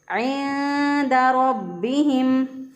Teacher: रा को पुर पढ़ेंगे क्योंकि रा के ऊपर ज़बर है। रा के ऊपर ज़बर हो तो रा को पुर पढ़ते हैं, मोटा पढ़ते हैं, और रा के ऊपर पेश हो तो भी रा को मोटा पढ़ते हैं, और रा के नीचे ज़ेर हो तो रा को बारीक पढ़ेंगे।